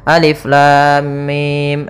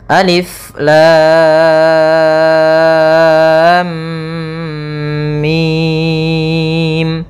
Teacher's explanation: langsung masuk mim misalnya Alif Lam Mim nah ini kurang tepat Harusnya lamnya kita panjangkan enam harakat dulu baru ditahan mimnya sebanyak dua harakat karena di sini ada mim ketemu mim kemudian baru mim nah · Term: mad lazim Harfi mustaqal